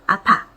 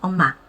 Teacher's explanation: 입술로 붙이는 피읍하고 미음 소리